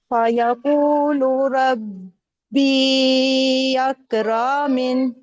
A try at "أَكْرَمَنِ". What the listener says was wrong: اکرمن. را تو تب لمبا کریں گے نا جب الف آئے گا. الف واو یا نہیں ہے اسی طرح نہیں کھینچنا. اکرمن.